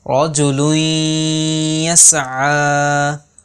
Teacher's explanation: نون ساکن کی جو آواز ہے وہ مدغم ہو جائے گی، یعنی وہ یا میں مل جائے گی۔ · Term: ادغام